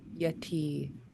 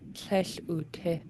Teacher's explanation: Yeah, that's the tone in the second syllable. So yeti is long and low in the positive form. In the negative form, it goes short and high.